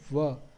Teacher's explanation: दंत और ओष्ठ से व वर्ण है इसका उच्चारण होता है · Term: दंतोष्टम